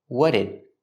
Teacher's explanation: the T in what links with the D in did, and you hear a fast D.